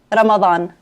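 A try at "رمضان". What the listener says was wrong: Yeah, Ramadan. It's the D. You can say it like a TH, like a the. Ramadan.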